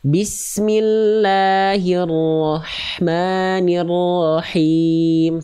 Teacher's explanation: Hak kecil ada 2 di sana, rohmani dan rohim, dilafalkan dari tengah tenggorokan, karakteristik nafasnya berbisik.